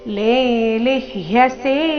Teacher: ಮೊದಲನೇ ಅಕ್ಷರ ದೀರ್ಘ ಇದೆ ಲೆ ಎರಡನೆಯದು ರಸ್ವ ಲಿ